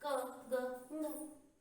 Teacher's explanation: अल्प प्राण। इनके उच्चारण में कम श्वास की आवश्यकता पड़ी, क, ग, ng, हकार जैसी ध्वनि नहीं निकली।